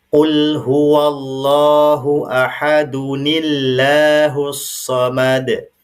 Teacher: karena didahului oleh bunyi nun wiqayah yang kasrah maka lam pada lafaz Allah ini berubah dia bunyinya menjadi tipis